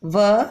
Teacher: व का उच्चारण स्थान दंत्योष्ठ है, क्योंकि इसमें व आप बोल करके भी देख सकते हैं कि इसमें व दांत और ओष्ठ दोनों का प्रयोग हो रहा है। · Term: दंत्योष्ठ वर्ण